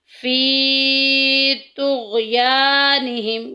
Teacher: یا ساکن پیچھے زیر آ گئی ہے، یا مدہ کا قاعدہ جاری ہو رہا ہے، تھوڑا سا لمبا کریں گے